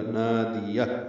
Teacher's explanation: نادیہ، نا الف مدہ ہے، 2 حرکات لمبا ہے، دال کو جلدی پڑھیں گے، یا کو ہا سے ملا دیں گے، ہا ساکن پہ ہمز ہو جائے گا، نادیہ۔